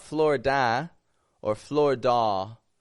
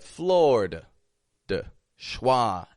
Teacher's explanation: awah it's not Flor da or Flor da but floor dwah ending totally weak unstressed quiet sound